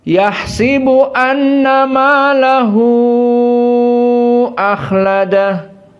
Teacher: maka bikasratus sin yahsibu dan malahu akhladah dalam keadaan al-isba'